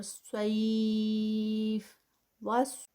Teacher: یا لین میں جب اس کو سٹاپ کریں گے تو اس کے 4 کاؤنٹس، اور فا کا جو ہمس ہے اس کی اینڈ پہ اس کی ساؤنڈ آئے گی